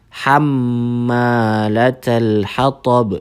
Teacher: Hammalatal hatab di situ ada gunnah musyaddah atau huruf mim yang bertasydid. Hamma jadi ditahan sebanyak 2 harokat. Hamma di situ ada mad tabi'i lagi.